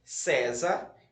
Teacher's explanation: César está na penúltima sílaba